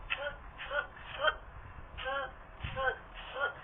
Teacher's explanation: When you're pronouncing 滋滋滋, you're actually sticking the tip of your tongue and try to use it to touch the lower teeth, the row of the lower teeth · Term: 平舌